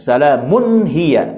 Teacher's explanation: salamun itu tidak dibaca gunnah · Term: idhar